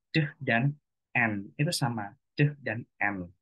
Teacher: Deh dan n itu dihasilkan pada tempat artikulasi yang serupa yaitu di alveolar. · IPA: [d] dan [n]